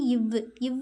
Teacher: இவ்வுன்னு சொல்லும்போது நம்மளோட மேல்வாய் பல்லு கீழுதடில் பொருந்தும்